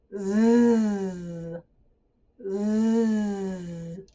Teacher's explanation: I really exaggerate the air coming out from between my teeth like a string. Biting my teeth.